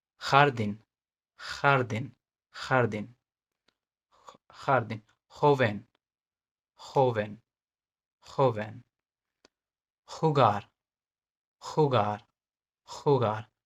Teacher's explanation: गले में से निकलता है, जिसको बोलते हैं ख, ख। एच के साथ हल्का सा ख साउंड, एच के साथ हल्का सा ख साउंड, इट विल बी ख।